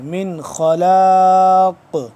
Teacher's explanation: ہے جب وقف ہوگا تو آگے سے قاف ہے قاف کیونکہ ساکن ہوگا تو یہاں پہ ہم اس میں قلقلہ کریں گے